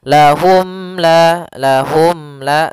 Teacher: suara mimnya tidak boleh ditahan tidak boleh lahum la tapi akan tetapi dia harus jelas dan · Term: izhar syafawi